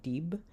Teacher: You get voiced stops, like at the end of dib.